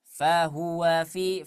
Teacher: huruf H ini memiliki sifatnya itu lemah, tersembunyi dia suaranya. Jadi berat kita mengucapkannya. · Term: sifat khafi